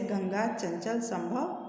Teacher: अनुस्वार का उच्चारण नाक से होता है